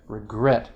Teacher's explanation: you've got regret stress on the last syllable